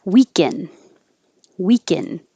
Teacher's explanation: Sounds the same as weekend because we won't release the D.